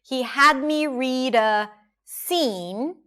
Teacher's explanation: Had is long and higher in pitch. Me is reduced again.